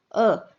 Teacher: मध्य स्वर, जिसमें जिह्वा यानी जीभ का मध्य भाग सक्रिय रहता है, इसमें केवल एक ही स्वर आता है, वो है अ।